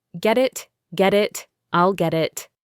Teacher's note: The get it part links together. The t in get becomes a soft d sound. Get it. Get it.